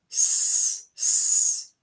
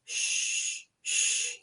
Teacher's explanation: The tip of your tongue is touching the ridge behind your teeth. S. But for sh, it's the middle of your tongue that's touching the roof of your mouth.